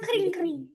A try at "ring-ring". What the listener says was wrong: Yes, betul, kring-kring, tapi beda sedikit sama bahasa Inggris. Kalau bahasa Indonesia kan kita pakai K depannya ya. Kring-kring. kalau bahasa Inggris K-nya dibuang. Jadi bunyinya ring-ring. Bunyinya beda dikit.